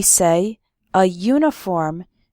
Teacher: we say a uniform because uniform starts with a y sound